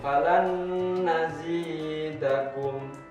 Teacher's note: nun sukun bertemu dengan nun, juga sama bacanya harus mendengung, langsung masuk ke suaranya nun.